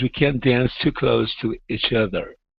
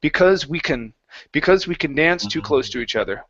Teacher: Because if when I say this, if I take out can't and I switch it to can, okay, because both of them are very similar, and because when we say can't, we typically drop that T, or the T combines into the next word.